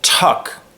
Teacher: when I say tuck I'm blowing air out